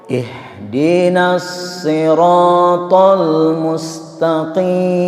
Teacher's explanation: Alif dengan ha itu sama-sama dari tenggorokan yang terjauh.